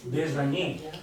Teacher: Sarà una S sonora e non una Z.